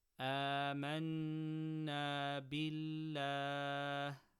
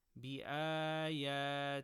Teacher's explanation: Lam of Allah after kasra, empty mouth.